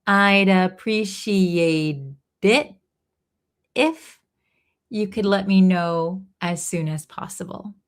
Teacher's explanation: I'd appreciate, here it links, I'd appreciate it, So this T in appreciate is going to be a flap T, sounds like a D